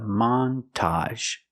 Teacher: We're going to stress both syllables. Not a montage, but a montage.